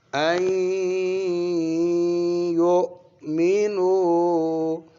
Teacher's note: آگے جی آپ کا ہے ان، لیکن آگے یا حرف عیر ملون ہے تو نون کو یا میں اور غنہ کرنا ہے